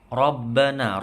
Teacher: Rabbana, roknya tebal ya, baknya tasydid. Rabbana, na panjang 2 harokat, la panjang 2 harokat.